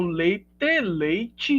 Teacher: uma consoante que não era palatal se torna palatal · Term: palatalização